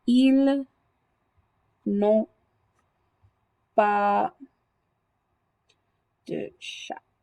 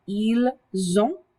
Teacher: when you break up the subject and the verb with your negative markers, it gets rid of the Z sound.